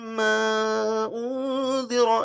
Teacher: ما دونوں جگہ آپ کو یہاں پہ مد کرنا ہے، کھینچنا ہے، پرولونگ کرنا ہے